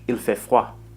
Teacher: In French, il fait froid. Notice that the D sound at the end of froid is silent.